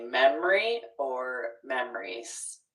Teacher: you can drop that middle syllable and say memory or memories